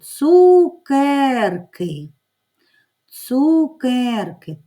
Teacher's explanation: перший звук у слові цукерки звук ц приголосний твердий наступний звук другий у голосний наступний звук к приголосний твердий далі